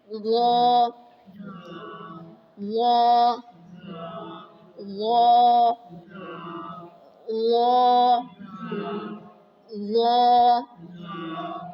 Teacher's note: lips گول بھی نہیں کریں گے، اور نرم بھی پڑھیں گے، اور موٹا کر کے بھی پڑھیں گے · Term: موٹے حروف